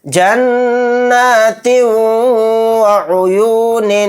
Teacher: تا کے نیچے تنوین ہے، تنوین کے بعد واو آ گیا تو یہاں پر بھی ادغام مع غنہ کا قاعدہ ہوگا، تا کو واو میں ملاتے ہوئے غنہ کر کے پڑھیں گے